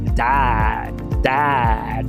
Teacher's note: Você quase nem fala esse D no final.